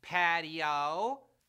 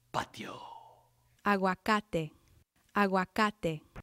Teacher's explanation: in English we make patio a three- syllable word patio in Spanish the I and the O sort of blend together into one sound making patio a two- syllable word